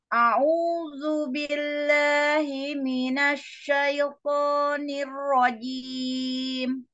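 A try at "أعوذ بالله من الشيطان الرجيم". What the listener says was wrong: A-nya jangan naik. Datar, lidahnya datar, jangan naik, jangan ke hidung.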